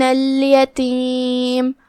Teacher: یہاں لام القمریہ ہے تو اس کا دھیان رہے، ہم لام کو ظاہر کریں گے اور اسے جزم سے پڑھیں گے